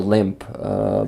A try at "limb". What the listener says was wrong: And also the pronunciation is limb with a silent letter at the end. well, actually, it's a B at the end. So there's limb and there's limp.